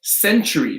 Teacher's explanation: The T-U is going to have a hard C-H sound.